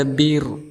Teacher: Ada ra yang disukunkan karena di akhir ayat ataupun diwaqafkan, sebelumnya berharakat kasrah, maka kita hukumi sebagai tarqiq, artinya tipis.